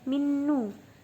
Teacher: sebab ada nun sukun bertemu dengan huruf nun. Ketika dibaca huruf nunnya harus didengungkan. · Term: idgham bila guna